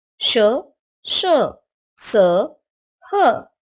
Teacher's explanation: इनका उच्चारण करते समय हवा के तेज गति से मुंह से रगड़ खाने के कारण ऊष्मा गर्मी सी पैदा होती है इसलिए इन्हें ऊष्म व्यंजन कहते हैं यह संख्या में चार है